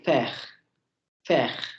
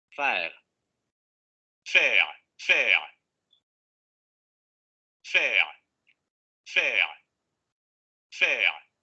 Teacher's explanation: Semiabierta anterior no labializada. A diferencia de la semicerrada